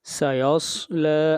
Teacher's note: سین کو موٹا نہیں کرنا اور صاد حروف مستعلیہ میں سے ہے، اس کو ہمیشہ موٹا پڑھا جائے گا